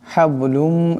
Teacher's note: হাবলুম এখানে বা সাকিন, বা কলকলার হরফ, আওয়াজটি একটি জটকা খাবে